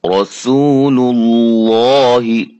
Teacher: لفظ اللہ سے پہلے والے حرف پر پیش آ رہی ہے، لفظ اللہ کا لام موٹا پڑھیں گے